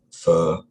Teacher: there's a kind of long schwa, which I think probably for me has the same quality as schwa, but it's just long rather than short